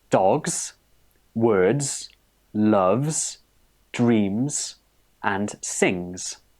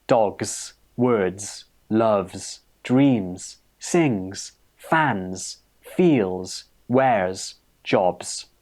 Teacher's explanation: you need to use the Z sound for words that end in a voiced consonant. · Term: Z ending sound